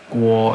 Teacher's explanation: The go sound is labialized, so something like guo. It has to do with basically rounding your lips.